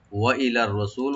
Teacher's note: হামজাকে right দিয়ে লাম open রেখে এখানে রাটাকে আমরা ডাবল করে ডিপ করে পড়বো । ওয়া ইলার রসুল, সু এখানে টানবেন, লামে কোনো টান নাই,